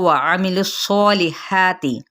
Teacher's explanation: آمنو، آ پہ مد صریح الف کا قائم مقام، نو پہ مد صریح الواو، وعملوا الصالحات، वाव को होंठों की नातमाम गुलाई से, आइन को वस्ते खलक से अदा करेंगे, लाम की पेश को सौत के साथ मिलाएंगे और आमिलु सौ पूर्व भी पढ़ना है।